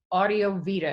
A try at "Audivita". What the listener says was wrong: Not quite. It's Audivita. easier than what you said. Yes, one less syllable anyway.